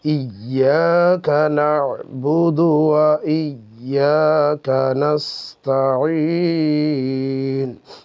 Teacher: মদের হরফ এবং তার পরের হরফের সঙ্গে যদি অক্ফ হয়, থেমে যাওয়া হয়, তখন সেটাকে 3 আলিফ পরিমাণ টেনে পড়তে হয়